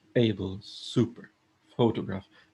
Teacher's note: the focus or the emphasis is on the first syllable